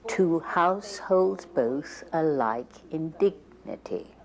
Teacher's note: you can hear how the vowels and consonants in those first two words take longer to speak whereas in the end words they are quite short